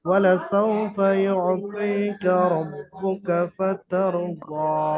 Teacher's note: এবং জদের উপরে খারা যাবার আলিফ মাদ্দার সমতুল্য, অর্থাৎ জদের উপর খারা যাবার আসার কারণে আলিফ মাদ্দার সমতুল্য জদকে এক আলিফ পরিমাণ আলিফ মাদ্দার মতো টান দিয়ে পড়তে হবে